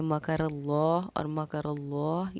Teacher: लफ्ज़ अल्लाह के लाम से पहले ज़बर या पेश हो तो लफ्ज़ अल्लाह के लाम को हम पूरी यानी कि मोटा पढ़ते हैं